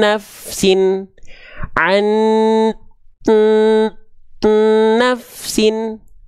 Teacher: n yang pertama masuk ke n yang kedua